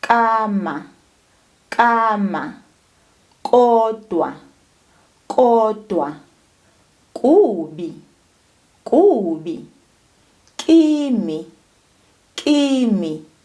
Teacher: The K sound comes from the back of the tongue.